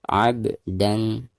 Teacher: Ab ba sukun sekaligus posisinya ada di tengah-tengah bacaan, maka dihukumi qalqalah sugro dan cara membacanya harus dipantulkan dengan suara pantulan yang tipis